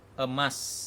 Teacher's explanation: Lalu bunyi vokal sedang tengah seperti bunyi E, contoh emas.